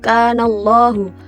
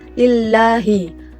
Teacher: Allahu itu dibaca secara tebal. Sedangkan kalau tarkik Allahnya itu dibaca secara tipis seperti lillahi. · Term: tafhim